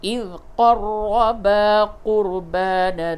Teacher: را کو پر کیجئے، را مشدد ہے